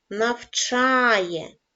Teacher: наголос падає на голосний звук а